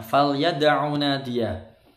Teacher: Dal sukun mantul. Ya, qalqalahnya sugro, qalqalah kecil. Aunya ini ditekan falyad'u nadiyah.